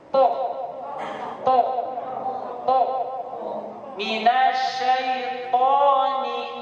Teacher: cara mengucapkan po itu tidak boleh ada hamas atau desisan nafas.